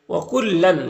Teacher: وَكُلًّا، یہاں پر تنوین کے بعد نون ہے حروف یومن میں سے تو تنوین کو لام سے ملا کر غنہ کے ساتھ پڑھیں گے، اس کو ادغام ناقص کہتے ہیں۔